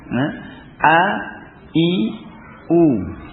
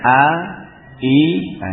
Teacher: Ini tekan. Sifat jaharnya pada alif, pada hamzah ini memiliki sifat jahar dan sifat syiddahnya.